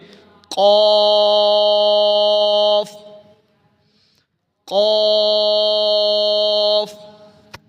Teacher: قاف، صحیح کر کے پر کر کے، کاف نہیں پڑھنا بلکہ قاف